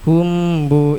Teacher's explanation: mim sukun bertemu ba samar bacanya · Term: ikhfa syafawi